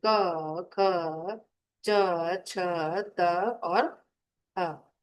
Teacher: अघोषः, बिना नाद के, बिना कंपन के ध्वनि